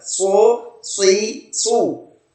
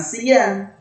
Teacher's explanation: sod itu huruf tebal, sementara sin itu huruf istifal, huruf tipis, lidah datar kalau sin.